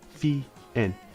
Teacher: fien, high tone, low tone. You start high, you finish low. Fien. And the agreement for this word, the representative, is u.